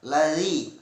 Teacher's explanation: zal tipis, masih mengucapkannya di ujung lidah dan dua buah gigi atas